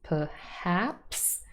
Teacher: the second syllable is stressed · so per is not stressed contains a schwa perhaps can become props perhaps I know it sounds strange when